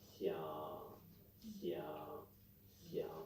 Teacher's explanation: And listen to what he has to say. The third tone is a low flat tone. It's always low and always flat.